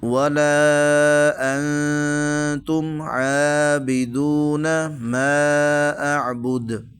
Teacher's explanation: لا اعبد ما تعبدون ولا انتم عابدون ما اعبد۔ اب اس میں یہ جو نون ساکن ہے، ٹھیک ہے، اس کے بعد حروف حلقی میں سے کوئی حرف نہیں ہے تو اس پر ہم غنہ کریں گے، یعنی اخفا کریں گے۔